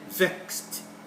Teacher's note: All those ending in XED would produce the sound kst, kst